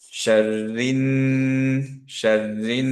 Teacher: রিনের ক্ষেত্রে খেয়াল করে দেখেন নুন নুন গুন্না হচ্ছে, গুন্না কামিল, এর জন্য আমরা ধরে রাখবো 2 কাউন্ট